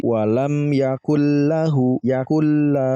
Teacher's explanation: jadi Nun matinya ini malah kita hilangkan langsung bacanya ke lam makanya di sini lamnya Bertasbih karena penggabungan nurmati langsungnya kelam dan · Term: idgham bilagunnah